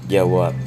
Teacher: dalam bahasa Indonesia ada kata jawab yang akhirannya adalah B yang diucapkan jawab akhirannya P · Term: arkifonem, arkifonem B